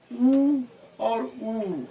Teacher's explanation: ऊ बोलते हैं तो हमारे होठ जो है दोनों गोले हो जाते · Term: ओष्ठ स्वर